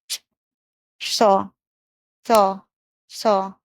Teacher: तो मूर्धा में जानी चाहिए जीभ सौ बोलने में, पेट कटा वाला।